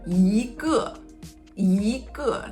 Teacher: 一 and then 个 in front of tone 4, it turns into tone 2. So when you say it together, you say 一个, 一个, not 一个.